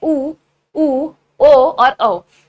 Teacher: तो आपके जो होठ हैं वो राउंड शेप में बदल चुके हैं · जिन स्वरों के उच्चारण में आपके होठों का आकार गोल होगा अथवा राउंड शेप वो ले लेंगे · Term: व्रतमुखी स्वर